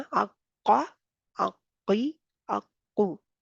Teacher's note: Number एक इसमें क्या है कि सख्ती से हिट करना है, सख्ती से लगाना है मखरज पर। नंबर दो, जुबान की जड़ जो है बिलमुकाबल नरम तालु से लगाएं, तो जी फिर अदा होगा। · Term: काफ